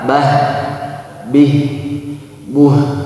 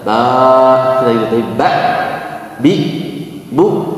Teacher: Jadi kalau hamzah ketika disukunkan dia mengalir suaranya, tidak ba, bi, bu, itu untuk huruf hamzah. Kalau huruf ha, bah, bih, buh, nah masih ada terdengar suara mengalir.